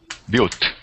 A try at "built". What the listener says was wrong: All right, let's give me a good L sound. Built. Yeah, you had pronounced it with I don't know. In Portuguese, do you usually pronounce that L like a O, like a Brasil, when you pronounce that L?